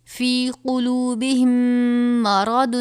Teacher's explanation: میم ساکن کے بعد دوسری میم آ جائے تو ادغام میں شفوی کا قاعدہ لگے گا، یعنی غنہ کریں گے